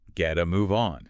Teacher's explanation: The T in get is flanked by vowels, so it becomes what we call an alveolar tap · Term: flapped T